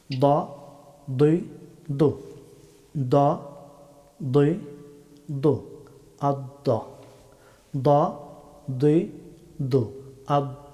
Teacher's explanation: হয় জিপার বাম অথবা ডান কিনারা আদ্রাসে উলিয়া উপরের চরবন্দ পাটির মূল এইখান থেকে দ হরফটি উচ্চারিত হয়